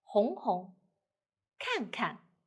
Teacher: if we have something double, repeat. So the second one should be light and short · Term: neutral tone